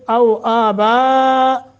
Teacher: او آبا مد متصل ہے 3 الف کے برابر